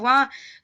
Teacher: दंत और ओष्ठ से मिलकर बनता है वा, तो दंतोष्ठ होगा। तो इसका उच्चारण स्थान वा का दंतोष्ठ हो जाएगा।